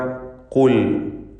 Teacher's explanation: 3ാമത്തെ ലെവലിലുള്ള തഫ്ഖീം തടിപ്പിച്ച് ഉച്ചരിക്കുക. ഖുൽ, മറ്റക്ഷരങ്ങൾക്കൊന്നും തഫ്ഖീം വരാതെ ശ്രദ്ധിക്കുക.